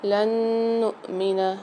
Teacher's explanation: لن نؤمن، نون ساکن کی تنوین کے بعد دوسری نون مشددہ نہیں، یا نون میم واو میں سے، تو یہاں پر ادغام مال غنہ والا قاعدہ ہوگا، یعنی یہاں پر ہم غنہ کر کے پڑھیں گے۔ حمزہ کے اوپر جزم سکون آ رہا ہے تو یہاں پر جھٹکا دے کے پڑھیں گے۔